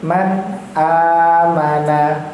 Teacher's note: Nah, itu huruf-huruf yang izhar kita bacanya tidak dengung